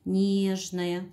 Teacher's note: нежная ударение падает на первый слог